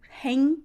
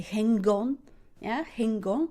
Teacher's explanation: Normally I would say hang without g, hang. But when I have the vowel sound, I will say hang on